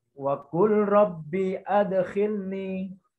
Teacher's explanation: Kalau idgham misalnya wa qul rabbi adkhilni. Nah, tentu itu diidghamkan, melebur huruf lam kepada ro. Karena di sini bukan idgham bi guna, bukan idgham bila guna. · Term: idgham mutlak